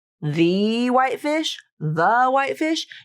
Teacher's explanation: she's using the schwa sound there, and it's a very, very quick the.